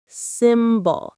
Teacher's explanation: The stress is on the first syllable, sim.